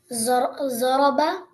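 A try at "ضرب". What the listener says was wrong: There is no zaraba. I've told you this before. There is no za in Arabic, okay? It's doraba. the zwad that you're reading, it's in Urdu only.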